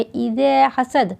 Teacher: حسد، ہا کو لیکن سانس کے ساتھ نکالتے ہیں تبھی ادا ہوتا ہے۔ اذا حسد، دال حروف قلقلہ ہے اس لیے وہاں 1 سیکنڈ رک کے قلقلہ کیا گیا ہے